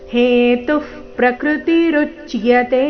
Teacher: ಪ್ರಕೃತಿ ಪ್ರ ಮೇಲೆ ಆಘಾತ ಕೊಡೋ ಅವಶ್ಯಕತೆ ಇಲ್ಲ ಹೇತು ಪ್ರಕೃತಿ ರುಚಿಯತೆ ಋ ಮೇಲೆ ಆಘಾತ ಮುಂದೆ ಅರ್ಧಚ ಪೂರ್ತಿಯ ಸೇರಿ ಸಂಯುಕ್ತಕ್ಷರ